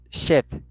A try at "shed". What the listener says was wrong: No, la estás pronunciando como nuestra E. La tienes que adelantar más. Shed, shed, shed.